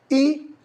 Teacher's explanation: ई, जब ई को बोलते हैं तो जीभ हमारी ऊपर, तालु बोलते हैं ऊपर वाले भाग को, वहां टच कर जाती है। इसी प्रकार बड़ी ई वहां पे भी टच करती है, और री और ई से मिलकर बना हमारा ए। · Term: अग्रस्वर